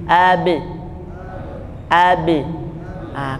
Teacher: jadi bunyi qqala huruf ba itu berhenti di bibir · Nah, seperti prinsip dasarnya makharijul huruf itu tempat keluar dan tempat terhentinya suara. Jadi bunyi qalqalah huruf ba itu berhenti di bibir.